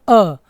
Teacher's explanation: है आपका मध्य स्वर मध्य स्वर क्या है अ है क्योंकि जब अ बोलते हैं तो वह हम कंठ से बोलते हैं · जब अ बोलते हैं तो वो हम कंठ से बोलते हैं